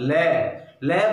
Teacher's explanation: और पार्श्विक व्यंजन है केवल लय, लय बोलते हैं तो श्वास वायु क्या करती है, जीभ के दोनों बगलों से होते हुए बाहर निकलती है